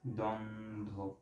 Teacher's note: বয়ের উচ্চারণটা অফ থাকে, আমরা উচ্চারণ করি দ্বন্দ্ব